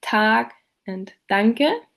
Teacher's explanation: The alveolar plosives t and d appear in words like Tag and Danke.